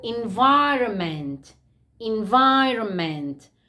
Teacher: as you see, guys, we write the N, but we don't pronounce it. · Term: silent